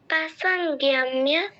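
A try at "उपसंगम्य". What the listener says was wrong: ना पसंगम्य, গিও নয়, সঙ্গ, তুমি বলো সঙ্গ। পসঙ্গম্য, না, তুমি সঙ্গ যখন বলছো ঠিক বলছো, পুরোটা উচ্চারণ করতে গেলে গিও কেন বলছো?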